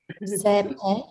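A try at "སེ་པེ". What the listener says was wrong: Yeah, I want a low tone here. Sepe. Yeah, Z is always low tone, right?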